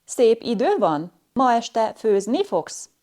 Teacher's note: A yes-no question has a rise-fall intonation pattern where a high rise in pitch is found on the penultimate syllable of the sentence, and there is a sharp fall on the last syllable.